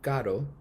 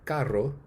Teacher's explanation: The first, a tap, which includes one contact between the tongue and roof of the mouth, and the second, a trill, which includes multiple contacts.